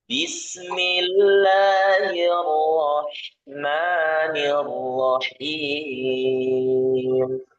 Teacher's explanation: Rnya tebal, H-nya tipis. Jangan ikutan tebal juga.